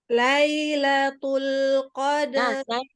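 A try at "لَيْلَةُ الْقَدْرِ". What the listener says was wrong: Nah, Lailatul tipis aja. ahsan, karena kalau huruf ta itu samanya dengan apa satu makhraj? Dengan to. Jadi ketika kita tebalkan tul tidak ada hamasnya, itu akan menjadi to.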